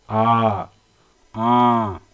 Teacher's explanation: विव्रत प्रकार के स्वर जो उच्चारण जब हम करते हैं तो मुख का द्वार पूरा खुला होता है